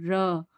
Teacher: र क्या होता है? लुठित या परकंपित व्यंजन। मतलब बोलते टाइम जीभ जब वाइब्रेट करे।